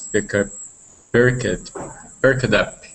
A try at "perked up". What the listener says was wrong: Okay, very close. Very close here. This is a T sound. It is perked. Perked up. Perked up.